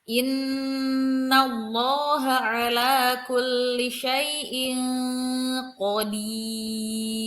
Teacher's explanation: Ada tanwin bertemu dengan qaf. Ya, jadi wajib dibaca samar dan mendengung. Tidak terdengar jelas nun matinya, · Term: ikhfa